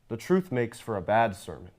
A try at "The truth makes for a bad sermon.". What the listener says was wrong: That's where you're messing it. There's too much stress on the word bad, I think.